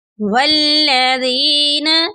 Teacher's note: والذین، اس لفظ میں دیکھیں یا ساکن ہے، یا ساکن سے پہلے ذال کے نیچے زیر ہے، تو یہ یا مدہ کی مثال ہے۔ اس کو ایک الف کی مقدار کے برابر لمبا کر کے پڑھیں گے